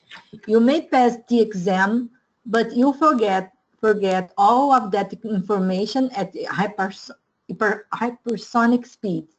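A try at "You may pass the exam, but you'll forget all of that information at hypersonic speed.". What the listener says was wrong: Much better. One more.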